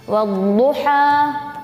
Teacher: makhraj dad ini keluar dari pinggiran lidah dan salah satu geraham atas bagian dalam yang ditekan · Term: huruf dad